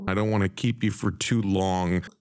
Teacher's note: the nasal NG sound in long is produced with that back of the tongue rather than an n and a g the G is not pronounced this is an entirely different sound